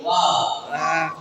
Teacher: 2 உதடுகளின் ஓரங்கள் சேர்ந்து உதடுகளை பூவின் மொட்டு போல குவித்து வாவென்ற எழுத்தும் வெளியாகின்றது.